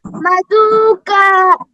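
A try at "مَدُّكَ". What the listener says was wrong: হ্যাঁ, দু টান দেওয়া যাবে না, ঠিক আছে। নাহ মাদুকা।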